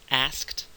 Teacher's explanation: transition but then there's another stop a voiceless avol or stop we go from the back of the mouth with the K back to the middle of the mouth with another stop and that is kind is is a tricky um combination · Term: SKT cluster